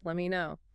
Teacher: The T in let drops before the M, and me reduces